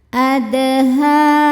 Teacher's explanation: Huruf dal sukun dihukumi qalqalah sughra karena dal sukunnya sukun asli dan ada di tengah bacaan. Cara bacanya dipantulkan dengan pantulan yang kecil. · Ha hukumnya mad tabi'i muqaddar sebab huruf ha berharokat fathah panjang. Cara bacanya huruf ha panjang 2 harokat.